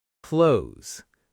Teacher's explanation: This one's tricky because of the th and s together. A lot of learners say every sound clearly, clothes, but native speakers often blend it into something closer to close.